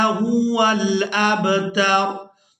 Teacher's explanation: वक़फ़ करेंगे तो वक़फ़ की सूरत में हमने यहाँ रा को साकिन कर देना है, जिस तरह से ये वाली रा साकिन है, इसके ऊपर जज़म है, तो इसी तरह से इस रा पर भी जज़म लगा देंगे और ता को रा साकिन के साथ मिलाएंगे।